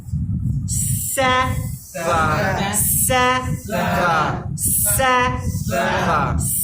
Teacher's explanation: তার মানে তিনটা জিনিস লাগতেছে, উপরের দাঁতের আগা, নিচের দাঁতের আগা, জিহ্বার আগা।